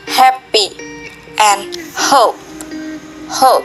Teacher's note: it is technically not even a real consonant sound since there is no constriction or obstruction of airflow